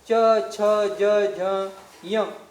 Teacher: च, छ, ज, झ, य आपण याचं उच्चारण केलं तर त्यावेळेस जीभ कुठे लागले? त्यावेळेस जीभ लागली आपली ताळूला, म्हणजे तालूला.